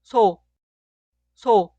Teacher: La consonante inicial suena S en español, pero se pronuncia débil, suave y relajada.